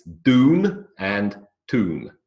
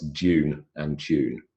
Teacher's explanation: So they have a pure vowel sound in the middle, oo. Whereas in British English, Australian English as well, it's dune and tune, or variations thereof.